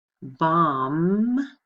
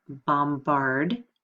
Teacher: The B here is silent. Bombard, you hear that B in the sounded consonant.